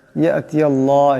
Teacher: আল্লাহ লামের ডানে জবর আসছে, আল্লাহ লামকে অবশ্যই মোটা করিয়া পড়তে হবে।